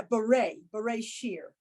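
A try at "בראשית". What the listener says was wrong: No, what's the last letter? Beret sheet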